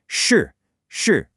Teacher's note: This is a retroflex sound, which means your tongue should curl back just a little bit.